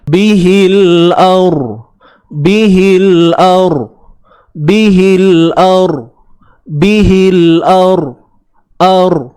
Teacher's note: ra kena tebal lah sebab ra mati sebelumnya baris atas.